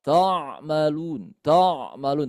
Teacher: hati-hati ainnya tidak kita tebalkan ya